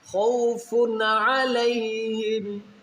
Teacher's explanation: خوف پہ غنہ نہیں کریں گے کیونکہ یہاں پر دو پیش کے آگے حروف حلقی میں عین ہے، تو یہاں پر غنہ نہیں کیا جائے گا بلکہ اظہار کیا جائے گا.